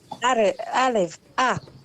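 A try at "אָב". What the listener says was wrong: Av, right? Av. The aleph is silent, and we just pronounce the vowel, and then we have to add the vet at the end. Av. Av.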